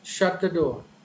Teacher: initially high and finally the tone falls down